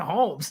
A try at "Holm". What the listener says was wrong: Hey, it's Holm. Holly Holm. The silent S.